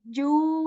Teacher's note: I'm extending the sound of ju here for 2 counts again because of vaw madda here